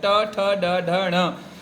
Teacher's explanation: जहाँ से ट बोला जाता है, ट ठ ड ढ ण, वो जगह कहलाती है मूर्धा।